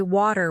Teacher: In American English, people might say water with a d sound, while in British English, it's often way too with a t sound.